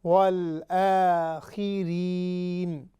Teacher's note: جو را ہے اس کے نیچے کسرہ آئے گی، تو بالکل باریک ہو کر اس کو پڑھیں گے